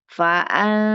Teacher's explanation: Ada nun ketemu dengan sin itu dia tidak idhar ya. Ada di nunnya samar. Fa'an bukan fa'an tapi fa'ansa nunnya siap-siap ke huruf sin.